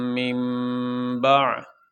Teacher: نون ساکن کے بعد با آ جائے تو نون ساکن کو میم کے ساتھ تبدیل کر دیا جاتا ہے۔ تو یہاں پہ یہ چھوٹا سا میم اوپر پڑا ہوا ہے، یہ اس لیے کہ نون ساکن کے بعد یہ با آ گیا۔